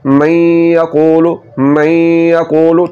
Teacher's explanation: نون میں صفت غنہ ہے، تو نون کو جب ہم یا میں ملائیں گے تو نون کی جو صفت غنہ ہے یہ باقی رہتی ہے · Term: ادغام ناقص